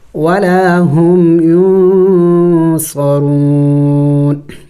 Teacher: ینصرون وقف کریں گے تو نون کو سائلنٹ کر دیں گے یعنی ساکن کر دیں گے